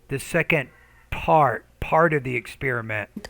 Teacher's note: so the P, you need to pronounce that with more air.